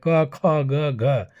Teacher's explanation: क से कवर्ग जो है कंठ से निकलता है आवाज